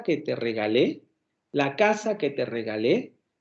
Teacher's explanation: la entonación va decreciendo dentro de esa frase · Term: curva entonativa